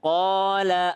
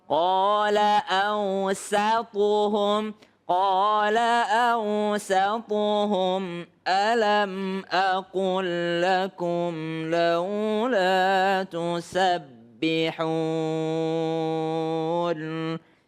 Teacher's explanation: Huruf sin ini adalah huruf tipis. Huruf thnya adalah huruf tebal. Jangan sampai huruf sin menjadi ikut tebal. Jadi jangan quhum ya, tapi tetap tipis. · Jangan sampai huruf sin menjadi ikut tebal. Jadi jangan qala awsatuhum.